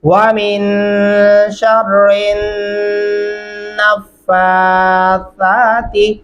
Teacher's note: शीन को रा के साथ, फिर रा को उठा के हमने नून के साथ मिलाना है